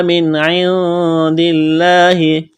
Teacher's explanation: لفظ اللہ کے نام سے پہلے زیر ہے. لفظ اللہ کے نام کو باریک کرنا ہے